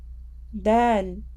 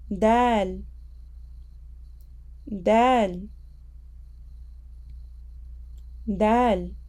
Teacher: the tip of our tongue will touch the roots of our top front teeth and some of the gums of that area.